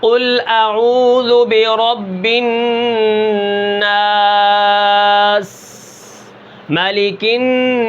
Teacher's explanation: تو سین کے اندر سب سے زیادہ سیٹی ہوگی